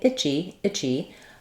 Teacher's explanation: first syllable is I my second syllable is G Chi so I just go right from my CH sound into the E